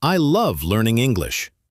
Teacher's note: putting stress on the word love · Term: sentence stress